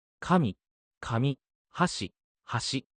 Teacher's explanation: in 神、 God, the pitch starts high and drops, while in 紙、 paper, the pitch starts low and rises. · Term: pitch accents